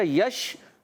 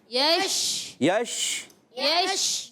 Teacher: یشربون میں یا کو شین سے ملائیں گے, شین وسط زبان وسط تالو سے ادا ہوتا ہے, یا بھی وسط زبان وسط تالو سے ہوتا ہے, ادا ہوتا ہے, شین بھی. جیم, شین اور یا, یہ 3 حروف ایسے ہیں جو وسط زبان وسط تالو یعنی زبان کا درمیانی حصہ اور تالو کے درمیانی حصے سے ادا ہوتے ہیں